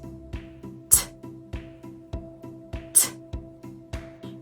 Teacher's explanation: So T is the unvoiced version of D.